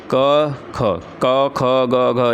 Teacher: क ख ग घ एक कंठ वर्ण है